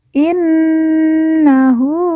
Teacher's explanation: Nun yang bertasdid langsung kita tekan kita tahan dua harakat dan didengungkan